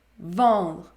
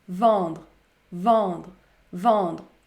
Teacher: La lettre E est suivie par la consonne nasale N et également par une autre consonne, le D. Dans ce cas, on prononce la voyelle nasale.